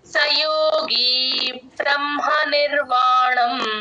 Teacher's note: గమనించండి బ్రహ్మ బి ఆర్ A M H A ఎక్కడ వచ్చినా సరే హ కింద మ ఒత్తు వచ్చినప్పుడు ఫస్ట్ మ చెప్పి తర్వాత హ చెప్తాం